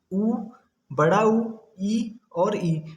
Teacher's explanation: संवृत देखिए, ऐसे स्वर जिनमें हमारा जो मुख होता है ना वो थोड़ा सा खुलता है, बहुत थोड़ा सा।